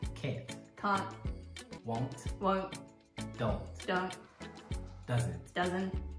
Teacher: But in Australia, we don't say T's. You just say the N sound instead. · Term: NT sound